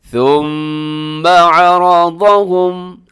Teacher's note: را موٹا ہے اور عین کا خیال رکھیے گا